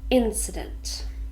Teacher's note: This is a noun and it has 3 syllables, and we stress the first one.